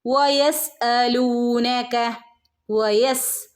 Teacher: വവിനെ ചുണ്ട് സർക്കിൾ ആക്കിയിട്ട് ഉച്ചരിക്കുട്ടോ